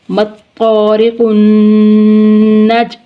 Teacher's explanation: جیم ساکن یعنی حالت سکون میں ہے تو اس پر جنبش ہوگی